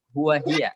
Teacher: Ini huwa nih ya, dengan hiya, nggak ada yang panjang sedikit pun.